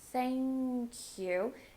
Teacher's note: stress thank a little bit more thank you for the th you're going to do the unvoiced th tongue between your teeth very soft air flow thank you and really try to connect those words thank you